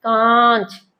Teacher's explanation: नाक की तरफ से प्रेशर निकलेगा आपके मुंह से प्रेशर नहीं निकलेगा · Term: अनुनासिक स्वर